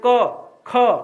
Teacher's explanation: क में ज्यादा कम हवा निकला, ख में ज्यादा निकला, तो क क्या हो जाएगा, अल प्राण।